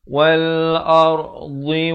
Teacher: Ra di sini jadi tebal. Ar-dha pula makhrajnya di tepi lidah.